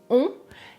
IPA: ɔ̃